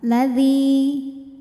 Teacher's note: Dzi mad tabi'i dhahiri karena ada ya sukun didahului harokat kasrah. Maka huruf dal panjang 2 harokat.